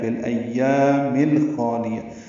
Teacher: فی الایام فا کو لام سے ملا دیا، اظہار قمری ہوگا